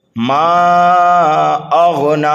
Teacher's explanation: اب اس میم کو 2.5 الف کے برابر کھینچ کر کے پڑھیں گے. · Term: مد منفصل